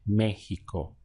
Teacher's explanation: Now I'm stressing the front of the word Mexico.